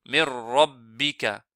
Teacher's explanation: ça se lit mirrabbika, sans trop rouler ra